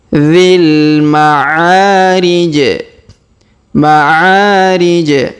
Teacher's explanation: Huruf dzi langsung sambung ke alif lam qamar ya.